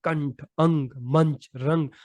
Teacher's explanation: हवा केवल नाक से निकलती है और इनका उच्चारण जोर से होता है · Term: अनुस्वार